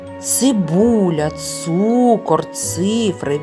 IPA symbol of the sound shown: ц